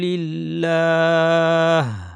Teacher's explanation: ফিতনাতুন ওয়া ইয়াকুনাদ-দীনু লিল্লাহ, এখানে যখন আমরা থেমে যাচ্ছি, প্রথমত লিল্লাহির লামটা পাতলা হবে, কারণ আগে জের আছে। আল্লাহ এর লাম মোটা হয় কিন্তু আগে জের থাকলে পাতলা হয়। লিল্লাহ, শেষে যখন হা দিয়ে থামবো তখন যেন আমাদের হাটা স্পষ্ট হয়, যেন শুধু বাতাস হয়ে না যায়।